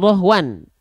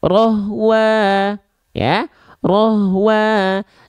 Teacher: Panjangkanlah bacaan selama 2 harokat tanpa bunyi an. Jadi nggak dibaca rohwan. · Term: Mad iwad